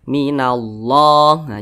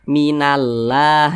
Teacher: Nah maka kalimat Allah dibaca tebal minallahah Jangan dibaca minallah itu salah tapi dibaca tebal minallahiboh ini